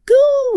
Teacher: Notice your lips. They're pushed forward, rounded like a small circle.